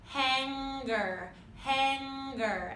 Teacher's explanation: And you will now hear a G sound because of the off glide.